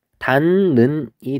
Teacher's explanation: 디귿하고 니은이 만났을 때 뭐로 바뀌냐면 니은하고 니은으로 바뀌는 것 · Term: 비음화